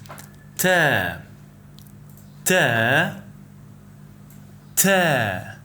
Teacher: When you pronounce ta, your tongue should touch the back of your upper teeth, block in air, and then release. The quality of this letter is considered a voiceless sound because vocal cords don't vibrate during its pronunciation. · The sound of ta is like T, similar to the English T in table or tub, but with the tongue touching the back of the upper teeth rather than the ridge behind the teeth